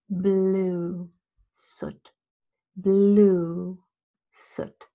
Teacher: you see that there's a little bit more lip rounding for blue it's not only longer